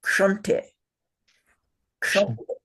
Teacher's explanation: The k sound at the beginning stuck to a sh sound.